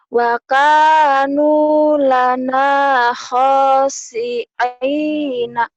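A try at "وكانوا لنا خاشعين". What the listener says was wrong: Wa kanu lana khashi'ina. Jangan wakana ya, wakanu. Wakanu, hei. Bukan wakana, wakanu. Tadi kamu baca wakana ya? Kalau ada kap gini panjang. Wakanu.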